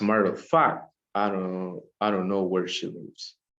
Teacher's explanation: We start with a high intensity and it gets lower.